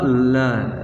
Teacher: तो पार्श्विक जो व्यंजन है वो कौन सा, ल। अगर ल को उच्चारण करते हैं ल को, तो हमारे जो साइडों से, हमारे बगलों से जो है वायु वो निकलती है, तो इसलिए इसको पार्श्विक व्यंजन की श्रेणी में रखा है।